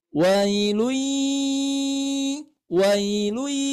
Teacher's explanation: cara bacanya ditahan dulu empat ketukan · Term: idgham bighhunnah